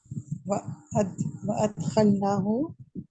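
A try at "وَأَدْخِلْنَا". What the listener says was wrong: वअदखलनाहु, ना थोड़ा सा लंबा करते हैं।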